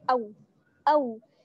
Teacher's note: واو ساکن ہے, لیکن واو ساکن سے پہلے کیا ہے؟ زبر کی حرکت ہے. تو یہ کیا ہے؟ واو مدہ نہیں ہے, واو لین ہے.